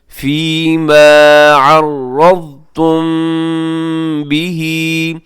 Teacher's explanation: یہاں عرضتم میں کیا ہوتا ہے کہ را موٹا پڑھیے گا